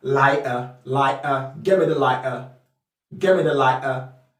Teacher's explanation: In the cockney accent, you wont find the /t/ in the cockney accent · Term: glottal stop